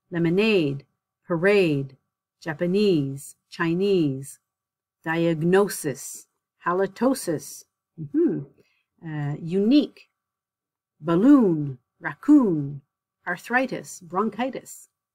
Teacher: the words in this section they the stress is on the suffix so at the very end